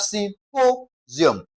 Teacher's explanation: Emphasis should be laid on po